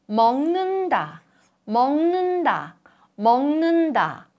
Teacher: Under the influence of 느, 그, a plosive changes to 응, a nasal sound. 그 changes to 응 under the influence of n sound. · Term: nasalization